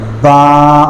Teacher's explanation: با کو جب ہم پڑھیں گے تو اپنے دونوں ہونٹوں کو ہم ملا لیں گے، با، اور سختی کے ساتھ ہم اس کو ادا کریں گے۔